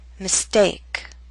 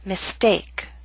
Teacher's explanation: Note with the st we do not have a strong puff of air.